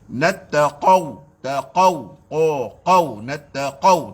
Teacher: qaf berbaris fathah ataupun dhammah, tafkhim dia, isti'la dia, jahar dia, syiddah dia sangat melampau sebab dia berbaris fathah.